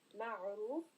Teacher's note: So the first Ra, we have a dhamma, Ra is heavy, and then also in Maghfirah, Ra again is heavy because it has a fatha.